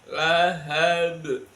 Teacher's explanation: Lahabnya itu qalqalah kubro. Wajib dibaca pendek